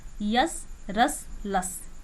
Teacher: यश का उच्चारण स्थान तालु, रस का उच्चारण स्थान मूर्धा, लस का उच्चारण स्थान दंत्य।